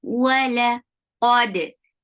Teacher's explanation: Qad, qaf is heavy. For fatha, open your jaws. Attach with dal. Dal will get sifa of qalqala.